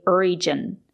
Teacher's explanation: We have to use the j sound, not the zh sound. Sometimes the letter g is pronounced with a zh sound, but not in this case.